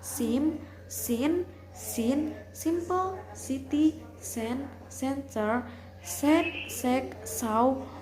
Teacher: Voiceless alveolar fricative sound S